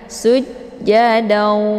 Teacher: Jadi daunya ditahan lebih kurang 2 harokat ya, sehingga terbentuk suara yang mendengung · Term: idgham bi gunnah